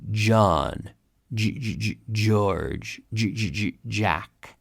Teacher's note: So the J, just like the G in English, is pronounced like a CH, and then you activate the vocal cords.